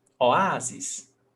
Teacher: O, A, zis. The stressed syllable is the before last, A